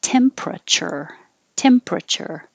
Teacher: we take out the er in the middle and make it shorter